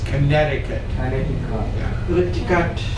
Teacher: You won't hear Americans use that first T sound.